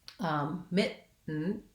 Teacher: I say mit, I move my tongue up to make that stop T, and then I don't release. I release right into actually the N sound, mitten, and then I do another stop T that I don't release.